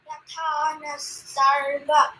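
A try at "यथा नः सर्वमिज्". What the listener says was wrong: No, again, now also you have to give anudata, good anudata. Yatha nas sarvamij.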